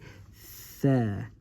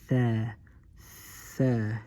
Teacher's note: you stick your tongue between your teeth and say th, th. You need air too